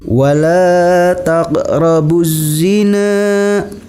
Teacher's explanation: Alif lamnya tidak nampak atau alif lamnya tidak dibaca, tapi langsung dimasukkan kepada huruf zai. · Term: alif lam syamsiah